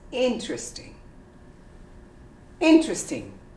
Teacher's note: say interesting if it's a question isn't that interesting and but the most common way would be interesting you completely omit the e